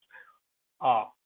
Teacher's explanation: it's the most open sound